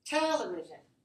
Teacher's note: this should be stressed 4-1. And it goes high, low, low, low.